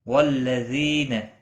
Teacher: یا مدہ ہے، ایک الف کے برابر کھینچ کر پڑھیں گے۔ حمزہ ساکن کو جھٹکے کے ساتھ تھوڑا ادا کریں گے۔